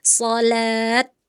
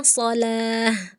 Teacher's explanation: Saat Anda berhenti sejenak, seharusnya bukan ta lagi, tetapi ubah menjadi huruf ha. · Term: ta marbuta